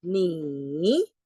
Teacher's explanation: the third tone is longer kasi going down and going up siya. May curve siya.